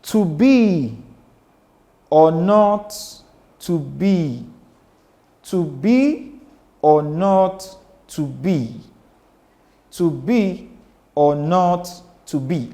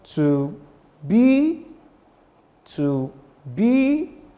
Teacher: When I say to to my voice is quite low. I am not applying any energy or very little degree of energy to mention two. But by the time I got to B, my voice went up. So I said to B to B or now by the time I got to O, my voice goes low again.